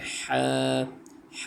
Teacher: ہا حلق کے بیچ سے ادا ہوتا ہے۔